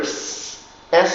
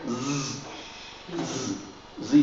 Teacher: the S has two forms the regular s s sound or the voice z z z sound